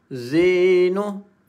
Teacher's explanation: Z huruf zai dia sofir, dia ada bunyi laser kat sini